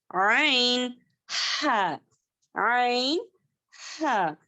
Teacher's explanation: وسط الحلق سے یعنی حلق کا درمیانی والا حصہ، اس سے جو ہے عین ہا نکلتے ہیں